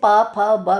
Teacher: पा जब आप बोलते हैं दोनों लिप्स आपस में टकराते हैं। · बिना लिप्स को टकराए बोला ही नहीं जाएगा, पा फा बा बोल ही नहीं सकते, आप बोलकर देख लीजिए। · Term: ओष्ठ